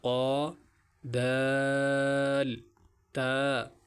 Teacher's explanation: زبان کی پش اور اگلے دونوں دانتوں کے مسوڑوں سے را ادا ہوتے ہیں، را۔ اسی طرح زبان کی نوک جب اوپر کے اگلے 2 دانتوں کی جڑ سے لگے تو وہاں سے یہ 3 حروف ادا ہوتے ہیں